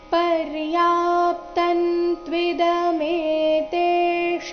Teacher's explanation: ಇಲ್ಲಿ ಮೇ ತೇ ಶ ಮೂರುನು ದೀರ್ಘ ಬರಬೇಕು